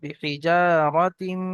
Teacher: বিহিজা রাতিম মিন সিজিল, র জাবার র, তা মিম দুজের তিম, এখানে মিমের উপর তাসদিদ এসছে, ওয়াজিব গুন্না একালি পরিমাণ গুন্না করে পড়তে হবে।